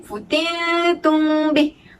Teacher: Futintum, nun bertemu dengan ta. Ta bukan huruf yang isti'la. Maka nun juga perlu dibaca dengan nipis.